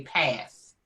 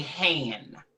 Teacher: Ebonics pronunciation includes features like the omission of the final consonant in words like past, they say pass, and hand, they say han.